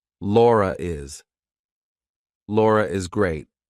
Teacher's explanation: if I have to link my name to something else that's a vowel, I have to put an R in there. So I say, Laura is. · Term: intrusive R